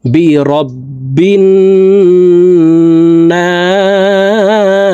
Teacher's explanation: না এখানে 3 আলিফ টেনে সিনকে সাকিন করতে হবে, কারণ মদের হরফের বামের হরফে ওয়াকফ হইলে মদ্দা আরজি 3 আলিফ টেনিয়া পড়িতে হয়।